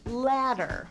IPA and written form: ˈlæd ər (ladder)